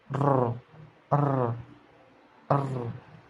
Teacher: huruf R yang bunyinya itu digetarkan sedikit